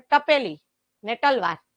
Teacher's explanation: દક્ષિણ ગુજરાતમાં ટ ને ત બધું સરખું જ